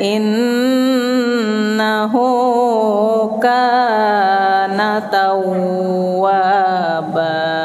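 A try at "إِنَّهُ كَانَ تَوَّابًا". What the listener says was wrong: Nah, taunya jangan direndam. Itu bacaan idgham bigunna. Ini bukan idgham bigunna. Tawwa tawwab. Waba. In kana tawwaba. Kayak hilang dulu datangnya. Kana tawwaba. Bukan. Kana tawwa. Bukan. Tawwaba. Innya panjangi. In.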